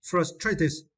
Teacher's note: Follow American pronunciation, we need to stress the first syllable first.